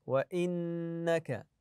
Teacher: النون المشدده ناتي بالغنه فيها